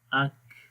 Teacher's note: انفتاح اسمات اور قلقلہ جب ہوگا تو پھر اق اق. کاف کے اندر صفت ہم، سانس جاری رہے گا